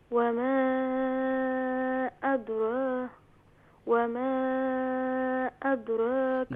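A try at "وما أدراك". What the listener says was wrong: دال کو لائٹ کریں گے. ہاں عین کا ساؤنڈ ادا کریں گی، حمزہ کا ساؤنڈ نہیں ہونا چاہیے.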